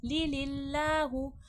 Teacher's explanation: अल्लाह लफ्ज़ से पहले ज़ेर है, तो अल्लाह लफ्ज़ नॉर्मल फ्लैट अल्लाह पढ़ा जाएगा, मोटा नहीं किया जाएगा।